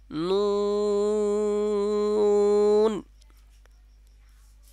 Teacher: হবে নুনটা হলো জিহ্বার আগা তার বরাবর উপরের তালুর সঙ্গে মানে জিহ্বার আগাটা উপরে যে তালু আছে তার সঙ্গে লাগাইয়া উচ্চারণ হবে এবং নুন বলার সময় ঠোঁটটা গোল আকৃতি থাকবে এ অবস্থায় উচ্চারণ করতে হবে যেমন আমি আপনাদেরকে পড়ে শোনাচ্ছি নুন